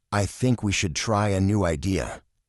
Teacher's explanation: Voice goes down at the end. This is called falling intonation.